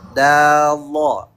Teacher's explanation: Kalau sh atau sa yang ditebalkan dengan mencara lidah belakang naik sama seperti qo kalau do seperti kita bilang da terus lidah belakangnya ikut naik